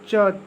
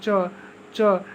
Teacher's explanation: च तालू से तो आ रहा है च च लेकिन महाप्राण नहीं है क्योंकि एक नंबर प एक नंबर पर क्या होता है अल्पप्राण